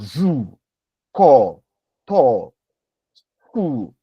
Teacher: there is some kind of lip rounding that accompanies the pronunciation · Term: labialization